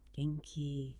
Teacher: Just rising intonation, meaning, are you well?